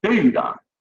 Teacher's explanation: a penúltima sílaba é mais forte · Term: paroxítona